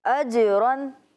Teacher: جیم کی جب ادائیگی ہو رہی ہے تو آواز لوٹتی ہوئی معلوم ہو رہی ہے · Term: قلقلہ